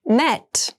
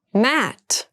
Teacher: Met has the more closed sound and mat has the more open sound.